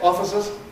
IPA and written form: ˈɒfɪsəz (offices)